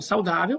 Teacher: A penúltima sílaba é a mais intensa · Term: paroxítona